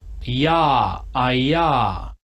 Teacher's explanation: La vocal, la aproximante palatal, transcrita como J